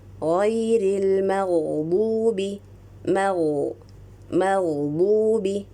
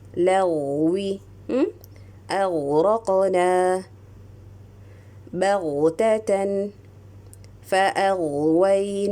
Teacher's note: when you are producing the sound of the ghain sukun, give maximum timing and imagine the 1 o'clock direction.